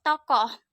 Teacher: Bunyi O dengan ciri-ciri agak rendah, belakang, bulat